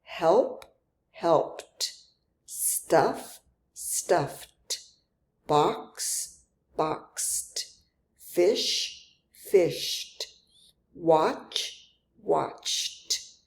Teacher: Again, all we did is add the d sound to the base verb. Sometimes the letters e d sound like the t sound t in cat. And again, we do not add another syllable to the base verb.